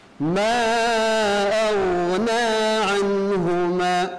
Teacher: huruf ghain, huruf isti'la, maka dia memiliki sebagai sifat huruf isti'la tebal, juga memiliki sifat huruf rakhawah, mengalir.